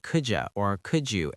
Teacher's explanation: Notice it often sounds like could you or could you in natural speech the D and Y blend together seamlessly